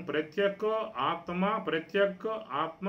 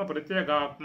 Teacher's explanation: ప్రత్యక్ కకారమే గకారంగా మారిపోతుంది. కకారం నాదాక్షరములకు శ్వాసాక్షరములు పరమైనట్లయితే ఇది నాదాక్షరంగా మారిపోతుంది.